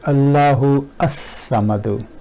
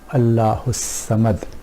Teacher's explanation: For example, if this was hamzatul qata'a, we will say Allahu as-samadu, and because the hamza of lam tarif is connecting hamza, hamzatul wasl, we do not pronounce it